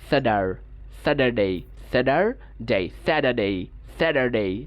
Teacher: আমেরিকানটা সাধারণত রৌটিক হয়ে থাকে। সো ওরা এই যে আর যেটা আছে র সাউন্ড, সেটা উচ্চারণ করে।